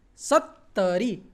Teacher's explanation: Sa, again, it's dental. Sa-ta, half ta, and then full ta.